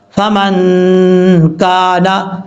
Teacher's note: یہاں پہ ایک الف کی مقدار غنہ کر کے پڑھیں گے۔ کاف کے آگے الف ہے، یہ ایک الف کی مقدار لمبا کریں گے